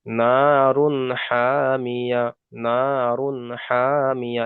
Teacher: এখানে নারুন বলে গুণনা করা যাবে না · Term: ইজহার